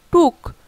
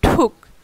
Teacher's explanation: প্রথম শব্দের তুলনায় দ্বিতীয় শব্দে কিন্তু বাতাসটা বেশি বের হচ্ছে